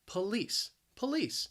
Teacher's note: Now, the word has 2 syllables. The stress is on that second syllable. That first syllable, you hear that schwa, that puh. But that second syllable, that spelling, that L-I-C-E, is pronounced lease.